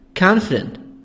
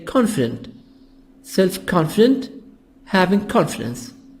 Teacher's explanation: we make the O as A sound in American